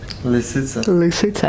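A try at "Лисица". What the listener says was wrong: and smile. Lisitsa. No, don't move your lips, Lisitsa, and just and just try to say something just in English. Lisitsa. Again, like smile, say Lisitsa, and try to change your pronunciation. Smile, just smile. Say Lisitsa. Okay, and just try not to move your lips.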